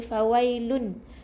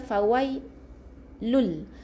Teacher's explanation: Masukkan huruf bunyi nun ni ke dalam bunyi lam yang bersabdu ni dengan satu harakat. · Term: Idgham bi gunnah